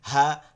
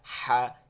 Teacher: দুই হা, একটা গম্ভীর একটা হালকা আওয়াজ। হা জবর হা, হা জবর হা, হা জের হি, হা জের হি, হা পেশ হু, হা পেশ হু।